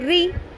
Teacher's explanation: را کو باریک رکھنا ہے، روئی نہیں پڑھنا، یہ غلط ہوگا